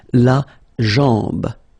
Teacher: A-M, when you combine these two, basically it's just like A-N, so it's nasal and it's en.